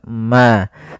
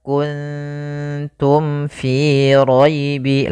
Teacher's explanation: Maka mim mati itu kan makhrajnya daripada bibir kita. Maka mim itu kan rapat ma. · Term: izhar syafawi